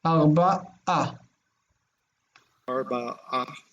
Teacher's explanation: the ayin just cuts the breath